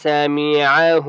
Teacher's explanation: عین کی آواز باریک حلق سے نکالیں گے